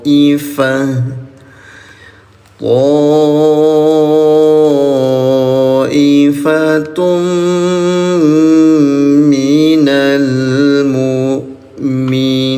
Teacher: leburkan bunyi tanwinnya ke huruf mim disertai dengung dua harakat namanya idgam biguna